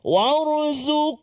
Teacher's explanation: Satu huruf ra yang mati ataupun sukun sebelum dia baris atas waw. Jadi ra tu tebal lah. Tafkhim. Cuba war.